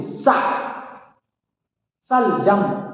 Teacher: इस सलजम वाले सा को तालु से बोलते